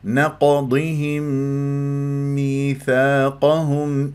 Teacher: ميم نقضهم ادغمت في ميم ميثاقهم ادغام متماثلين من غير كاس حتى لا يتشوه صوت الميم الميم الميم نقضيهم